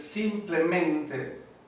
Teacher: la sílaba acentuada con un acento secundario es la primera sílaba